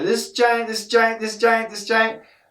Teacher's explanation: The s and the J would blend together.